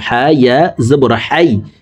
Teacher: হা হরফকে হলকের মধ্যখান থেকে উচ্চারণ করব হা ইয়া জবর হাই কারণ হার মখরাজ হলকের মধ্যখান থেকে হবে